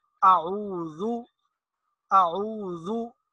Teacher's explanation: اب اس کو زال، زا یا پھر زو جو ہوتا ہے زو، اس کے ساتھ ملا کر نہیں پڑھیں گے بلکہ ذال کا جو اپنا مخرج ہے یا اس کی ادائیگی کا جو اپنا طریقہ ہے اس طرح ہم پڑھیں گے۔ ذال، زبان کا آگے والا کنارہ نوک جب اوپر کے دانتوں کے کنارے کے ساتھ لگے گی تو اس سے ذال ادا ہوگی، تو اس کو ہم اسی مخرج سے ادا کریں گے اعوذ، اعوذ، یہ دوسری بات۔